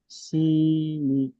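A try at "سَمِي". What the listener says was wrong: সি কি করে হচ্ছে? সিন যাবার সা, মিমিয়াজের মি, সামি।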